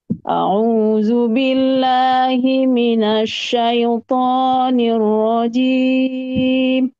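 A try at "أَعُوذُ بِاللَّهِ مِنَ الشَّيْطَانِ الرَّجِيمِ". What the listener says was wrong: Ya, masih tinggi. Syaitan, tonya diayun dulu. Syaitanir rajim.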